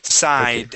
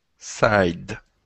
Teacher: Give me a D there at the end instead of a T.